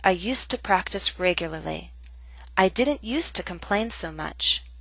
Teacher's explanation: When it's followed by a consonant sound, we do not pronounce used to with a full vowel sound. To becomes t.